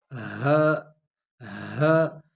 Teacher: صرف سینے سے ہوا نکال کے حلق میں یہ ادا ہوگی